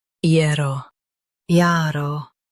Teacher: Stress the year syllable and keep o light.